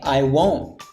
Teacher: the t gets reduced to the point it almost loses all its presence